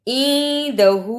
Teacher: ہا پر الٹا پیش اور چھوٹی مد ہے اس لیے اسے لمبا کرنا ہے